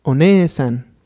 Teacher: Por lo tanto, se puede hacer la vocal larga. Y bueno, la pronunciación quedaría One-san, haciendo la vocal larga E.